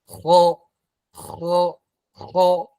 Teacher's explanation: Pakai lidah terangkat pada huruf kha. Karena dia huruf tebal. Kha. Ya, tebal dia. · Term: Isti'alah